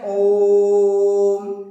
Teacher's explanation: जैसे मान लीजिए ओम लिखना है हमको यहाँ पर, तो हम इस तरह से करके ये इस तरह से लिख देते हैं, तो इसका मतलब क्या हो जाएगा कि हम जो ओम पढ़ रहे हैं, यहाँ ओ को पढ़ते समय ओ हम काफी देर तक कहते हैं, 3 मात्रा के समय लगाकर कहते हैं, तब अंत में ओम कहने से ओम, इस तरह से अगर हम उच्चारण करते हैं, ये क्या कहलाता है? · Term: प्लुत स्वर